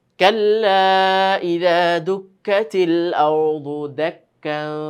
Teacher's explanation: তানবিনের উপর থামলে কি হয় এক জবর পড়ে যায় আর এক জবর থেকে আলিফের মধ্যে এক আলিফ টেনে থামতে হয়